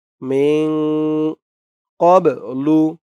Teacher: ইকফা গুন্নাহ নুন সাকিনের পরে ইকফার হরফ কফ আসছে মিন ক্বাবলু ক্বাব বাটা কলকলার হরফ ধাক্কা দিয়ে পড়তে হবে ক্বাবলু